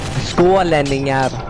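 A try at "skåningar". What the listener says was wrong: Alltså, förläng inte ordet. Kan du sluta förlänga ordet? Det är fel ordet.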